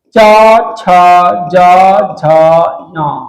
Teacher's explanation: वर्णों के उच्चारण में जीभ का अगला भाग ऊपर उठकर तालु एवं वर्ष को छूता है। मसूड़ा और तालु को छूता है। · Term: तालव्य व्यंजन